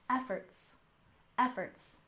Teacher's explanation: And efforts, we stress the first syllable